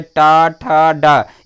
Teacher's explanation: तो देखिए टा ठा डा, ये तीनों वर्ण टा वर्ग के हैं जिनका उच्चारण स्थान जो है मूर्धा ही होगा